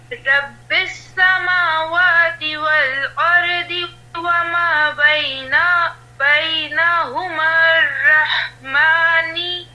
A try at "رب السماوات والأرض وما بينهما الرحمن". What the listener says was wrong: نہیں، رحمان وقف کرو، سانس ویسے آپ کا چھوٹا ہو رہا ہے.